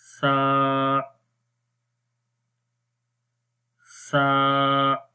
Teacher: زبان کی نوک کو اوپر والے دانتوں کے کناروں پر لگائیں گے جو سامنے والے دانت ہیں, تو اس وقت سا حرف پڑھا جاتا ہے اور اس کی آواز نرم رہتی ہے.